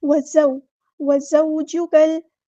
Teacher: کاف کو ہم نے لام کے ساتھ ملا دینا ہے، حمزۃ الوصل ہمارا ڈراپ ہو جائے گا۔ لام یہاں پر لام قمریہ ہے، لام کو ہم یہاں پہ ظاہر کر کے پڑھیں گے۔